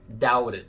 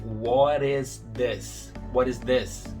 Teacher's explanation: eu não pronuncio o T como um T, e sim como um R, doubted. Isso é outra coisa muito comum no inglês. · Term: T vai virar um som de R